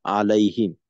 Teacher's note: মিম সাকিনের ইজহার আছে গুন্না করবো না